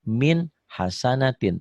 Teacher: dibacanya juga min hasanatin tanpa ditahan, tanpa dengung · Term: idhar